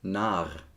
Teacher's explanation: So basically, the r drags the o down to an a.